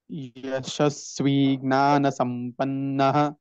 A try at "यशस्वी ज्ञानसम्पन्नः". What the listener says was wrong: ज्ञान not gnana jnana GNYA but in English when we write GNA only people write but the actual way that should be pronounced is jnana.